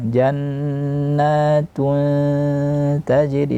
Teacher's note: Tajri juga sering kesalahan di jim, dibaca dengan berangin. Tajri tidak boleh berangin, maka bunyi qalqalah ya.